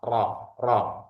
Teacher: bunyinya keluar dari ujung lidah tepat setelah makhrajnya nun. Jadi posisinya dia di ee lam dulu ya, kemudian nun baru kemudian ro. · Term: huruf ro